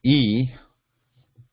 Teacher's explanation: E both are palatal sounds so the that means the tongue the flat portion the top portion of the tongue is raised towards the palate but there is no contact so the air is constricted at that between palate and the